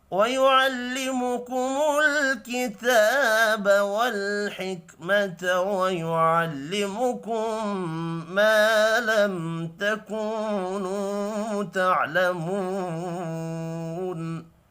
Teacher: میم ساکن کے بعد تا ہے، یہاں پر اظہار شفی ہوگا، غنہ نہیں ہوگا